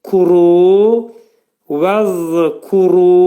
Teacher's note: Kəf hərfi incə samit. Kəfin məxrəci dilin sonu və dilçəyin axırındadır. Kuru, vəzkuru, ra dolu oxunacaq.